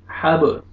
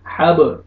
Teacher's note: فی جی دی ہا، ہا زبر با جزم حب، با کو مجزم ہے، حروف قلقلہ میں سے با ہے، ڈبل ساؤنڈ آئے گا